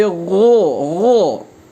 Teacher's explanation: Mesti tebal, tidak boleh gu, tapi ghu.